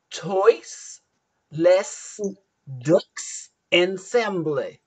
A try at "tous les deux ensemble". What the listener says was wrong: Tous, you don't pronounce the S. les ensemble. No.